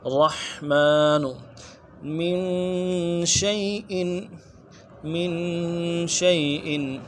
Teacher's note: مین میں نون ساکن ہے غنہ کریں گے ایک الف مقدار میں کھینچیں گے